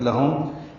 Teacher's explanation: لہم لام کو جلدی سے پڑھیں گے، میم ساکن پہ اظہار شفوی ہے۔